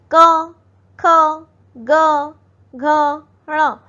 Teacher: गले से कंठ से इसका उच्चारण किया जाता है।